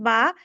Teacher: বা হলো ও ঠোঁটের ভিজা অংশ থেকে বা